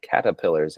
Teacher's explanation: I forget that there's supposed to be an R written there because I drop it myself.